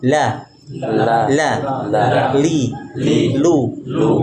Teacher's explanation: ujung dua tepi lidah sampai pada akhir ujung lidah menempel pada gusi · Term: lam